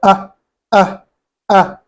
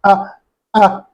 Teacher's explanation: if you go loosen it up a bit and be like ah, ah, you've left hamza. If you go like ah, ah, you make it go to the nasal sound, you leave hamza.